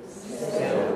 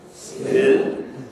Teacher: you pronounce it as English people do, then you'll have velarization on that L. That's what dark means in this context. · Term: dark L